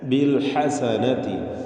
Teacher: ബിൽ ഹസനതി, ഹാഇൻ്റെ ഉച്ചാരണം ശ്രദ്ധിക്കണം. തൊണ്ടയുടെ മധ്യമാണ് ഹാഇൻ്റെ മഖ്റജ്, അവിടെ നിന്ന് വ്യക്തമായി ഹാ ഉച്ചരിക്കണം